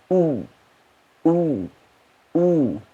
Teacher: Ketika baca U, bibirnya ngumpul jadi satu, mencucu, monyong. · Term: dhammah